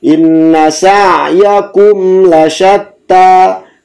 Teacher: Dhammah, inna sa'yakum, inna sa'yakum jelas. Mim mati, lam menghadapi lam, izhar syafawi tidak sama sekali didengungkan. Inna sa'yakum lasyatta, tidak membacanya inna sa'yakum lasyatta, tidak seperti itu karena tidak didengungkan.